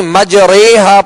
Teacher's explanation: امالہ والی را بھی باریک پڑھیں گے، یعنی مجریہا، پر نہیں کریں گے بلکہ باریک پڑھیں گے۔ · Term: رائے ممالہ